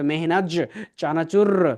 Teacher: যখন একটু ফাস্ট উচ্চারণ করবেন, মনে হবে মেহনাজ চানাচুর, আপনার কাছে কেমন লাগবে, তখন দেখবেন জটা চ দিয়ে চেঞ্জ হয়ে গেল